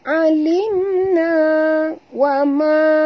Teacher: Bima alimna, ma di situ ma asli, alim mim mati bertemu nun, tak boleh dengung izhar syafawi ya. Tutup mulut tapi tak boleh dengung.